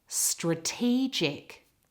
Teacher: the word stress changes position. It's in the middle of the word.